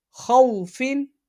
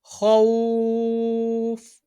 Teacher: حروف لین کے بعد عارضی سکون ہو اس صورت میں مد لین عارض ہوگا، اور اس کو 3 انگلیوں کی مقدار کے برابر کھینچ کے پڑھا جاتا ہے